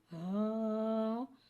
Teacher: ہا ایک الف یعنی 2 مقدار کھینچ کے پڑھتے ہیں۔ ہا حرف حلقیہ ہے، حلق کے نیچے والے حصے سے ادا ہوتا ہے